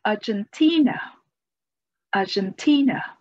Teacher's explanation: The stress is on the third syllable.